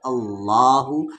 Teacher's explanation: لام اللہ کے لام سے پہلے یہاں پر زبر ہے تو یہ اللہ کا لام موٹی آواز سے ہیوی ساؤنڈ سے پڑھا جائے گا